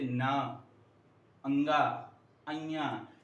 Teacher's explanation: क्योंकि इनका उच्चारण करते समय हमारे नाक से आवाज निकलती है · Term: नासिक के वर्ण